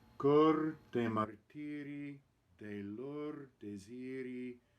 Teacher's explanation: the H of the first word is not pronounced and the O is closed